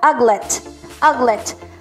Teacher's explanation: Ang stress po ay nasa first syllable, ha?